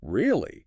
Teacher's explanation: Really with a high rising pitch is asking, Is that true? I'm surprised.